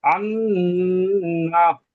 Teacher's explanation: নুনের উপরে তাসদিদ আছে, তাসদিদ আলা নুনকে একালিপ পরিমাণ গুণনা করে পড়তে হবে